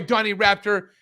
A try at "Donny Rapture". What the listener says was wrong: Are you saying the name wrong on purpose, or is this just like alert? Rapture. You're saying Raptor. Rapture, man. Like Rapture, like we're all going to the rapture and they're gonna suck us out of the sky. The televangelists talk like.